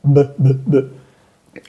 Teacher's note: es una B con los labios de arriba y labios de abajo se tocan